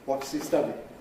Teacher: Nucleus stud high fall again for a wh question. So high head high fall. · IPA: ˈwɒts hi ˋ_stʌd_iɪŋ